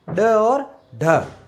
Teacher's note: उच्चारण में जीवा की नोक झटके से नीचे गिरती है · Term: उत्सिप